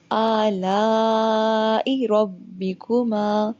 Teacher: آلا کے اوپر لمبی مد ہے، الف کے اوپر کھڑا زبر ہے. جو آ ہے وہ 2 سیکنڈ لمبا ہوگا، اور جو لا ہے اس کو ہم 4 یا 5 سیکنڈ لمبا کریں گے